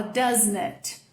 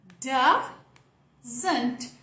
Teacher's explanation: é como se entre esse S e esse N, você colocasse um A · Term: schwa